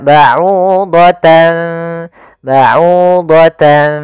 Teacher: ikhfa masih menyisakan ya antara bunyi nunnya tapi disamarkan kepada makhraj huruf setelahnya maka baud baudan seakan-akan ada ng tapi bukan karena dia ikhfa